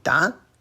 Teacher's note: Using second tone da instead of da